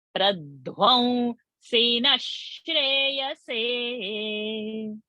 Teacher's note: When sh is the next word, visarga will become sh. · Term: Visarga shakara